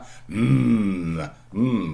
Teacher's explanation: the air does not leave your mouth but your nose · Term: nasals